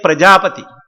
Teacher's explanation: Pra is Anudata, Prajapati, Pa is raised and Ti is Prachaya. So it has got all the four Swaras in this particular word Prajapati.